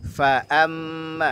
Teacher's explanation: Fa amma mimnya tipis, bergunah, berdengung dia.